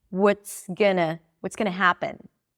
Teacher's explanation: Happen sticks out. Everything else is reduced.